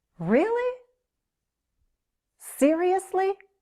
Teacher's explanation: You can also hear a strong rising intonation when someone is very surprised